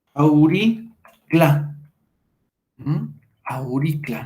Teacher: La postónica, la U, va a desaparecer y nos queda auricla.